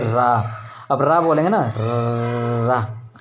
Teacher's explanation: जिन व्यंजनों के उच्चारण में जीवा को 2-3 बार कंपन करना पड़ता है वे प्राकंपित के। जैसे रा, अब रा बोलेंगे ना, रा, तो आपके दांतों में जो झंझनाहट होती है वो प्राकंपित कहलाती, ठीक।